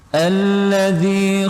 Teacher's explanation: Alladzi panjang dua harokat karena ada kasrah bertemu ya sukun, hukumnya mad tabi'i.